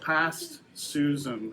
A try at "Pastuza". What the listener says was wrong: You gotta get a T in there. There's a T.